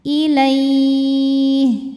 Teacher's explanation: Huruf yang disukunkannya ha. Jadi kalau berhenti ini dibaca panjang, boleh 2, boleh 4, boleh 6 harokat asal konsisten dalam sekali bacaan. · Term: madlin